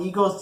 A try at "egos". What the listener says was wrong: I know you said egos, but it sounded like eagles when you first